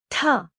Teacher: The best description of the sound in English would be a strongly aspirated ta, as in the word top, or the sound of tha in the word thing with a sharper attack.